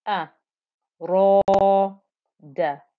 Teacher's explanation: because the ra is thick and heavy when it has a fatha on top of it, the whole of that 2-count stretch is thick and heavy